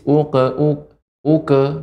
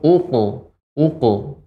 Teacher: Bagian pangkal lidah mengenai langit-langit yang lunak. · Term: qaf